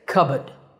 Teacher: If you're more into British English, you can drop the R and say cupboard.